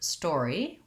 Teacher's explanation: we have first syllable stress and the store syllable is long and the e syllable is short the word story sounds just like the word store plus an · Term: or diphthong